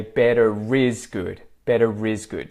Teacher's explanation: I don't pronounce the are at the end of better unless better is followed by a vowel in another word